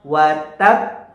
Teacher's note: cara bacanya berbeda dengan pangkalan Kubro bacanya Bagaimana wattab begitu ya jadi disukunkan dulu atau ditekan dulu di hurufnya kemudian dipantulkan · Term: Qalqalah Akbar